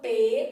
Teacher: análise fonética da palavra então ó pro eu falo P porque o p é uma consoante bilabial então junto a minha boquinha